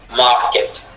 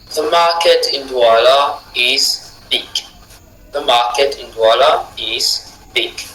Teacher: Mar, accentué, get, non accentué. The market in Douala is big.